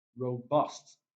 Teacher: Robust, the primary stress is on the second syllable.